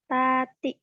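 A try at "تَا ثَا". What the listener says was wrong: Tati, jangan panjang.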